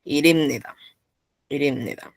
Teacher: La P cambio por una M.